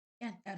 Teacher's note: Kəndlər sözündə də sözün kökü kənd, lər qrammatik cəm şəkilçisi, BDGC qaydasına görə kənd sözü t samiti keçir, sondakı d samiti özkar qarşılığına keçir